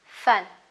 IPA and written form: fʌn (fun)